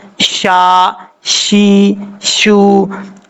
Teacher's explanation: زبان کا درمیان والا جو حصہ ہے اوپر والے تالو سے لگائیں گے تو شین